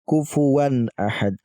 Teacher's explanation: Baik, selanjutnya teman-teman, di sini ada tanwin bertemu dengan hamzah. Ketika ada tanwin bertemu dengan hamzah, maka harus dibaca jelas, tanwinnya jelas, hamzahnya pun kita baca jelas. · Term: izhar